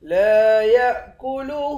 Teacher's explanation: لا یأکلہ، لام کے بعد الف ہے، ایک الف کے مقدار کھینچ کر پڑھیں گے، یا کو حمزے کے ساتھ ملا کر حمزہ پر جھٹکا دیں گے۔ ہاں کے اوپر الٹا پیش ہے، اس کو ایک الف کے مقدار کھینچ کر بھی پڑھیں گے، اور اس مد کو تین الف کے مقدار کھینچ کر پڑھتے ہیں۔